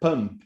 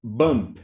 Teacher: the P and the B will use the same articulators in the mouth, right? Both are bilabial sounds, And when you look at the lips and the way they move, there is no difference. · the P is an unvoiced sound, the B is voiced. So we do have a difference, and you can hear the difference because of voice.